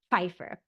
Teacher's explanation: You kind of put that P and the F together, Pfeiffer.